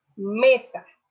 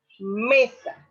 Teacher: la fuerza o la intensidad de la voz recae sobre la me, siendo esta la sílaba tónica y sa la átona.